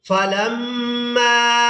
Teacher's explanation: میم کو الف مدہ اور مد کی وجہ سے کھینچ کر ادا کریں گے